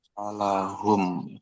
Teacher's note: nun dan mim kan dia di al-khaisum. Dia selalu melewati rongga hidung. Tapi dengungnya itu sedikit ya